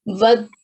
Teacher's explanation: you have to connect this waw with ba while prolonging it, okay? Because waw had a madde kabir on top of it.